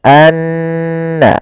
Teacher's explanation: Dan gunnahkanlah atau dan bacalah mim yang bertasydid atau nun bertasydid dengan bacaan gunnah. Maka cara membacanya tahan dulu n-nya, anna, baru dilepas.